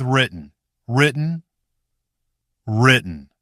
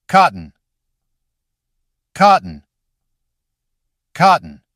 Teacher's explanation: This time, don't try to burst that middle T strongly, like a full separate syllable. Let it catch in the throat and move straight into N.